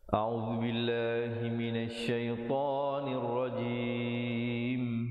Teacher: diwaqafkan dengan menyempurnakan huruf mim dengan ditutup mulut rapat dengan kadar 2, 4 atau 6 harakat